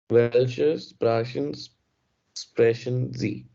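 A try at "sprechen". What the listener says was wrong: स्प्रासन नहीं है ये, ए सी एच जो है ना, ये ख होता है, स्प्राखेन,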